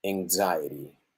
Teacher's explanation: prolongation of the sound at the end because it's final vowel